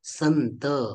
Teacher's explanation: आणि त व्यंजनाच्या वर्गातील अनुनासिक व्यंजन हे न आहे न म्हणून संत शब्दांमध्ये जो अनुस्वार आहे त्या अनुस्वाराचा उच्चारण न प्रमाणे होतं